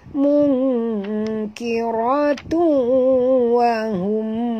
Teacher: tanwin bertemu waw, masuk dan dengung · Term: Idgham al-ghunah